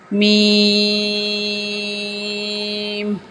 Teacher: دونوں ہونٹوں کے خشک حصے سے ادا ہوگا